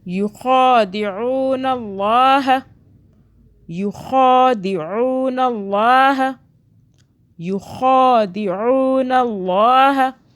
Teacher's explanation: خا کو کھینچا ہم نے، عو کو کھینچا، ٹھیک ہے، عین واو پیش عو۔ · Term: واو مدہ